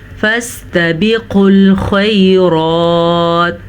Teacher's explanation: اب یہاں پہ 3 الفاظ کو ہم نے پر پڑھا، قاف کو پر پڑھا کیونکہ قاف حروف مستعلیہ میں سے ہے، پر پڑھا جاتا ہے، خا کو پر پڑھا کیونکہ خا بھی حروف مستعلیہ میں سے ہے، ہمیشہ پر پڑھا جاتا ہے، را کو پر پڑھا لیکن را حروف مستعلیہ میں سے نہیں ہے جبکہ را کے اوپر کھڑی زبر ہے، اس لیے ہم نے را کو پر پڑھا۔